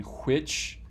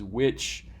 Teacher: it's the voiceless version of a voiced w